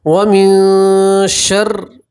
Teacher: اور میں نے آپ کو بتایا کہ نون ساکین کا یہاں بھی اخفا، یہاں بھی اخفا ہے، ٹھیک ہے، سیم قاعدہ یہاں بھی ہے، نون ساکین کے بعد اخفا کے 15 حروف میں سے یہاں شین آ رہا ہے، ٹھیک ہے۔ تو آپ نون ساکین کی آواز کو ناک میں چھپائیں گے اور گنہ کے ساتھ پڑھیں گے